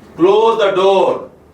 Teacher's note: Here the pitch is on the door. On the word door, then the sense is that of a polite request.